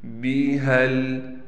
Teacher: ہا کو لام سے ملائیں گے، چونکہ ہا کے بعد الف اتنی بڑی لکھی ہوئی ہے لیکن ہم ہا کو نہیں کھینچ رہے، اس لیے کہ ہم نے ہا کو لام سے ملا دیا۔